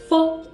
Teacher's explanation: When you are pronouncing F, your upper teeth will touch your lower lip like this. F.